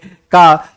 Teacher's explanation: तो का ध्वनि का उच्चारण कहाँ से होगा? कंठ से होगा